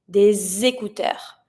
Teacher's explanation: When I link it, for example, here I'm going to link it with the S because I have des. The S is always going to be pronounced like a Z sound.